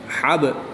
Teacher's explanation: با حروف کلکلہ میں سے ہے اور اس کے اوپر جزم ہے یعنی کہ با ساکن ہے۔ جب حروف کلکلہ ساکن ہوں تو ان میں کلکلہ خوب ظاہر کریں گے۔ حا با زبر حب پڑھیں گے، حب۔